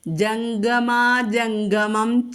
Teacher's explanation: എന്നുള്ളത് ജം എന്ന് വരും വരും അനുസ്വാരത്തിനു ശേഷം ഗ എന്ന മൃതു അക്ഷരം കവർഗ്ഗത്തിലെ അക്ഷരം വന്നതുകൊണ്ട് കവർഗത്തിലെ അനുനാസികം ചൊല്ലുക അനുസ്വാരത്തിനു പകരം അനുനാസികം